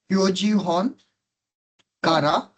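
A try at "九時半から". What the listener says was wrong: Kuji han kara. Han, beta, han. Not hon, han.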